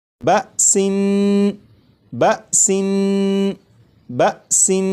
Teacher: جب تنوین کی ادائیگی کروں گا تو نون کو پڑھتے ہوئے زبان تالو سے لگا کر پڑھوں گا